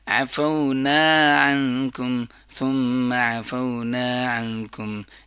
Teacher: ہوگا، میم کے اوپر فتحہ ہے، عین کے اوپر فتحہ ہے، نا الف مدہ ہے، فتحہ کے بعد جب الف ہوتا ہے تو اس کو لمبا کیا جاتا ہے